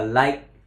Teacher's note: Tại cái âm I là âm ngắn, mà kèm với cái âm chặn hơi đi liền ở phía sau nữa, cho nên các bạn nghe là like.